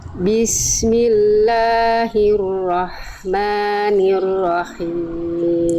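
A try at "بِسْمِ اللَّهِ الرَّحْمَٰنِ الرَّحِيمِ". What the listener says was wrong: Agak kayak ada kerasak-kerasaknya aja, dikit nih. Ini memang rawan nih H kecil nih. Rawannya kadang-kadang dia berubah jadi H besar, kadang-kadang dia pengen dapetin H kecilnya tapi terlalu bablas jadinya. Nah, ada kerasak-kerasaknya sedikit.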